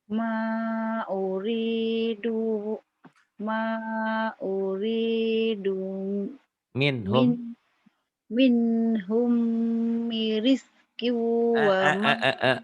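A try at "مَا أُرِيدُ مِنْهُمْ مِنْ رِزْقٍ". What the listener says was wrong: Ada tasdidnya tuh. Ma uridu minhum mir rizqi wa ma urid. Ayo di tasjidnya nih kakak nih agak masalah nih di sini nih. Pendek. Ma uridu minhum. Mir. Ini idgham bila gunah ya. Mir rizqiu.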